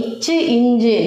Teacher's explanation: ஸோ இச்சு, இஞ்சு ஆகிய இருமைகளும் நாவின் இடைப்பகுதி, இச்சு, இஞ்சு நாவின் இடைப்பகுதி நடு அன்னத்தின் இடைப்பகுதியை பொருந்துவதால் பிறக்கின்றது